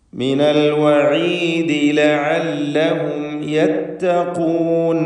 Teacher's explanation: സാക്കിന തമീം ഇദ്ഹാർ ശഫവി നൽകി മണിക്കാതെ വെളിവാക്കണം. യത്തഖൂൻ ഖാഫിന് നിസ്ബിയ തഫ്ഖീം കൊടുക്കുക.